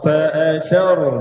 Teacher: tha itu nipis. Hujung lidah dikeluarkan sedikit, tapi ra tebal. Kerana tha berbaris atas.